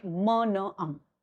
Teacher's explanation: And this is how we produce sounds. So only we have three nasal sounds in which nasal passage is open